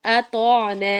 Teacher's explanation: وَأَطَعْنَا میں تو موٹا ہے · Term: تو کو موٹا